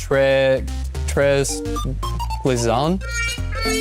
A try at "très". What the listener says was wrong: You're close. Here the S is silent. It's eh.